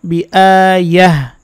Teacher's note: তো এখানে অকফের চিহ্ন আছে, আমরা কিন্তু এখানে অকফ করব, এটাকে অকফে মুতলাকের চিহ্ন বলা হয়। অকফের সময় গোলতা হা হয়ে যাবে